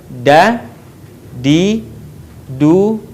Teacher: huruf da keluar dengan cara menyentuhkan ujung lidah kita ke gusi bagian atas sebagaimana kita melafalkan huruf ta di dalam keadaan mati huruf da